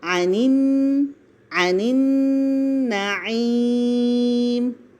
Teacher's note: تو یہاں پہ اظہار ہو رہا ہے، لکھ لیجئے، عن النعیم، نون پہ غنہ کیا جا رہا ہے اور مد عارض للسکون بن رہی ہے